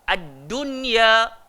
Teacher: Walaupun nun mati ni bertemu dengan empat huruf ni aseng, kalau dalam satu kalimah tak payah dengung. Dia kena izhar, kena jelas. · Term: izhar mutlaq